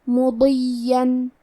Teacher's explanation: حرف الضاد کے ادائیگی زبان کے کروٹ اور اوپر کے داڑھوں کی جڑ سے ہے، ضاد حروف تفخیم میں سے ہے، تو ہم یہ حرف کو بھاری آواز میں پڑھیں گے